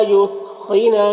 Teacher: خو کو پر پڑھیں گے، یہ حروف مستعلیہ میں سے